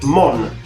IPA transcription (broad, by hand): ˈmɔn